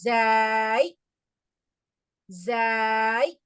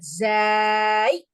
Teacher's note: அந்த பற்களோட விளிம்புல நாக்கினுடைய நுனியை தொட்டு வலுவான ஒளியுடன் ஊதுங்கள்.